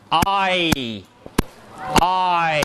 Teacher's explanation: saying the awe that the bostonians have for car and then moving the tongue towards e